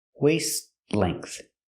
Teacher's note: And a waist-length. The T in waist is a stop T, but it's also between consonants, so you don't really hear it.